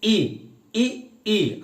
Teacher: जब आप ई और ई कह रहे हैं तो जीभ आगे आ रही है ना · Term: अग्र स्वर